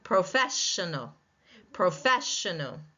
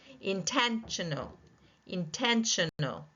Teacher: second syllable taking the stress